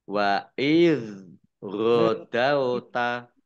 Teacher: zal sukun bukan kolkolah, jangan dipantulkan